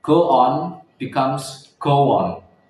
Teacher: Inserted sounds W after rounded vowels like O as in go on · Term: Intrusion